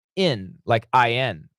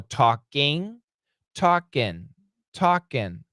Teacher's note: when we say it faster, it sounds like in, like in, a short I